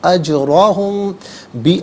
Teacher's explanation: میم ساکن اس کے بعد با آ رہا ہے تو میم ساکن کو غننے کے ساتھ ادا کیا جائے گا. اجراہم، بی علیحدہ احسنی علیحدہ ملا کر پڑھیں گے.